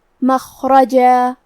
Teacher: ہم کلمت مخرجہ پہ رکیں گے تو تنوین زبر پہ مد الف سے رکیں گے · را پہ زبر ہے تو ہم حرف را کو موٹی آواز میں پڑھیں گے